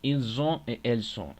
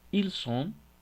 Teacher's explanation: En este caso tenemos que hacer bien la diferencia entre ils ont, la pronunciación ils ont, porque si no hacemos la z vibrante, estaríamos diciendo ellos son, a la vez de ellos tienen.